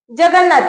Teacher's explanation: त च्या गटातील जे अनुनासिक आहेत न ते अनुनासिक येऊन जगन्नाथ हा जोडशब्द तयार झालेला आहे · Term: अनुनासिक संधी